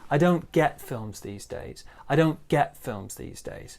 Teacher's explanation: we've got kind of a small stress on don'ts and then we've got this really big stress on get